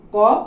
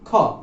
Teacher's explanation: খ বলার সময় একটা অতিরিক্ত শ্বাসাঘাত আমাদেরকে দিতে হচ্ছে, আর যখনই শ্বাসাঘাত দিতে যাচ্ছি তার মানে শ্বাসের প্রয়োজন হচ্ছে, অর্থাৎ বায়ু বাতাস বা যেটা প্রাণ বলছে অধিক প্রাণের প্রয়োজন হচ্ছে। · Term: মহাপ্রাণ